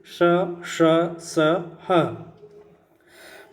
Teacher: पहला श का उच्चारण स्थान तालु है, दूसरे श का उच्चारण स्थान मूर्धा है और तीसरे स का उच्चारण स्थान दंत है। · इनका उच्चारण विशेष प्रकार की रगड़ या घर्षण से उत्पन्न ऊष्म वायु से होता है, इसीलिए इसे ऊष्म व्यंजन कहते हैं।